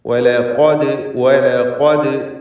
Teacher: വാവ് ലാമ് എല്ലാം തർക്കീഖിൻ്റെ അക്ഷരങ്ങളാണ്, ശേഷം ഖാഫ് മാത്രം തഫ്ഖീമിൻ്റേത്.